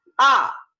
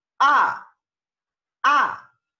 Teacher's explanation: Es un tono que va de agudo a más grave, ¿sí? De agudo a más grave. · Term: el cuarto tono